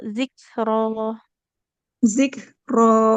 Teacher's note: jadi huruf kaf sukunnya harus ada aliran nafasnya ya